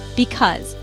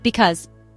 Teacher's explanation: 2 syllable word. Stress is on second syllable.